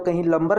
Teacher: कहीं कहीं क्या होता है, न का उच्चारण ल भी होता है।